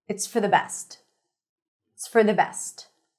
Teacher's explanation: Best is fully pronounced. It's for the reduced and connected.